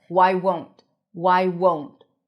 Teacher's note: Make sure you pronounce the long O sound. Otherwise, it might sound like want.